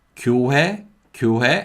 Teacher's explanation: when it comes after a vowel sound, in natural fast speech, 히읗 sound can disappear. So it can be pronounced like 교회, 교회, and that's fine. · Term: disappearing of the 히읗 sound